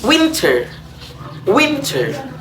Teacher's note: Nasalized flap R, as in American English, winter